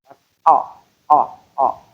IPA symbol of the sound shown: ʌ